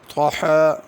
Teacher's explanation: طا کو پر کر کے پڑھنا، تحاہا نہیں پڑھنا